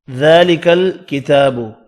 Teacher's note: ذال اور تا کھڑی زبر کی وجہ سے ایک ایک الف کی مقدار میں کھینچ کر پڑھیں گے۔